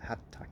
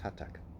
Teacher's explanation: It's almost like you say the T twice, but you don't go hat-tak. There's no gap between them and you just hold the T for longer.